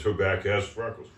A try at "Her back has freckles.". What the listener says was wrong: you said back ass.